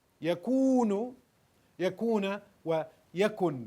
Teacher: The waw is dropping in al-mazzoom because we cannot have that long vowel before the sukoon.